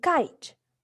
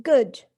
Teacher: with k in kite and g in good, we block the airflow with the back of the tongue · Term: oral stop